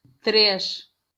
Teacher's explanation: Ese suena como el español pero con sh, pero eso es para el portugués europeo. · el portugués europeo va a sonar SH. Y de hecho no suena la I.